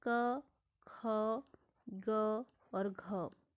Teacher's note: आपके कंठ में आते हैं क, ख, ग और घ